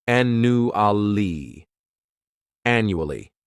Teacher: This word has 4 syllables, and the stress is on that first syllable. The second syllable, it's like you're just saying that letter U, And the third syllable has that schwa, annually, annually.